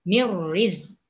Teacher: Kalau di sini mirri idgham bila gunnah. Jadi kita ni masukkan saja huruf ra. Masuk bacaan kepada huruf ra. Tapi jangan didengungkan.